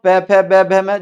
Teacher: जब तक दोनों होठ आपस में नहीं चिपकेंगे आप बोल नहीं सकते। दोनों होठ खोल के बोल के देख लो, नहीं बोल पाओगे। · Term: ओष्ठ्य